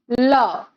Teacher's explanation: जैसे कि हम ल का उच्चारण करते हैं, उसी समय जिह्वा का अग्रभाग तालु को, कठोर तालु को स्पर्श करता है, उसके साथ साथ पार्श्व में से हवा का निकलना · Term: पार्श्विक व्यंजन